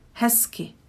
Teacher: So I don't really pronounce the z here, and I switch it to s.